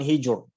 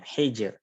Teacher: Jadi ro-nya tipis bukan hijur ya, hijr. Atau ini ro-nya sukun diawali dengan harokat kasrah.